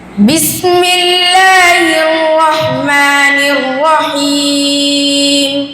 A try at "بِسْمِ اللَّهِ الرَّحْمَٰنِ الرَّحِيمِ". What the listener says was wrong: এত স্লো পড়ার দরকার নাই আরেকটু গতিময়তার সাথে পড়ো ঠিক আছে বিসমিল্লাহির রহমানির রহিম